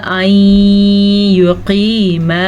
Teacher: ادغام بالغنّہ اور قاف کو پر پڑھنا ہے